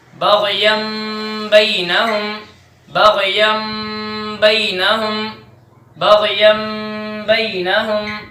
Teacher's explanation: دیکھیں کہ نون تنوین کے بعد با آیا ہے، ادھر ہم نون تنوین کو میم سے بدل دیں گے اور غنے کے ساتھ پڑھیں گے